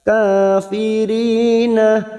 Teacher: ri kasar bertemu ya sukun 2 harakat.